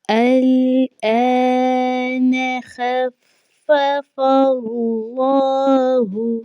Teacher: اللہ کے نام سے پہلے چونکہ زبر آ چکی ہے فا کے اوپر، تو اللہ کا جو نام ہے یہ موٹا پڑھا جائے گا